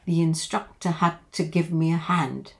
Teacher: we have the E sound and then it links to the other I, the instructor, with a Y, linking Y